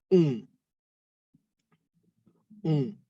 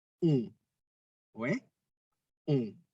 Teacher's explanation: Bibirnya membulat tertutup, mulutnya tertutup jadi bukan lebar gitu ya.